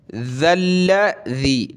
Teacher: दोनों ज़ाल पे ज़बान निकालनी है, लाम को सख्त करना है